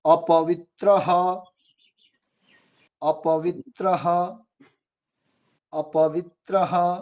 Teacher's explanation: विसर्गों का उच्चारण जो है वो ह की तरह होता है, लेकिन ह नहीं बोलना है।